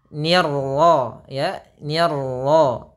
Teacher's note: Kemudian ni, kemudian ni-nya tipis, hati-hati, tapi jangan sampai ikut ni-nya tebal, ni-nya tipis, kemudian ro-nya tebal juga.